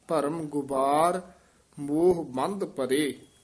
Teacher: ਗੁਬਾਰ ਪੋਲਾ ਹੀ ਬਬੇ ਨਾਲ ਬੋਲਣਾ